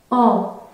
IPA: ɑ̃